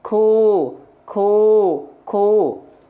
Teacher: ada bagian tekstur yang lunak sedikit nempel ke langit-langit keras maka sifatnya jadi hams keluar sedikit percikan nafas · ku enggak keluar nafas dia karena lunak dengan lunak rempel tapi kalau Kaf agak ke tengah dia nemper ke langit-langit yang keras ku ku ku Eng Enggak teman-teman kerasa enggak sama teman-teman sekalian